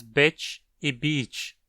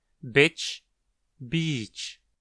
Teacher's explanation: Compare, por exemplo, os clássicos bitch e beach, onde a versão curta, e, é mais aberta que a versão longa, i